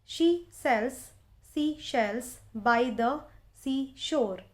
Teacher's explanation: there is a repetition of this particular sound S in the words sells, seashells and seashore, and it is at the beginning of these words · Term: alliteration